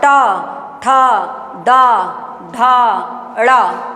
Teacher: तालु के पास और पीछे होता है ना। जब हम बोलते हैं ट तो जीभ क्या करती है? पीछे की तरफ राउंड लेती है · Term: मूर्धा